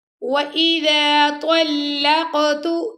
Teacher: قاف پر کلکلہ کیا ہم نے.